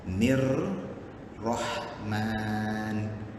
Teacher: bila dia kata samsiyah, berarti alif lam tu tak berbunyi. Dia langsung bunyi kepada ra. Nir rahman. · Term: alif lam samsiyah